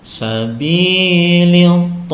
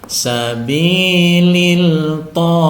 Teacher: apabila Al bertemu dengan huruf tho ini al-nya dimasukkan ke dalam huruf tho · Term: Idgham Syamsiah